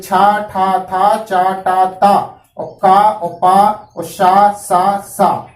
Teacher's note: इनका प्रयत्न जो है विवार भी है और श्वास भी है और अघोष भी है।